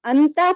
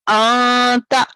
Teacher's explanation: یہ دونوں میں سے کسی ایک حرف کے بعد یہ حروف اخفا میں کے 15 حروف میں سے کوئی ایک حرف آئے تو ہم تنوین یا نون ساکن کی آواز جو ناک میں جاتی ہے اس ناک میں آواز کو چھپا کر پڑھیں گے ایک الف کے برابر